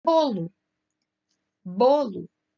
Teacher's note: O bo se destaca na palavra bolo.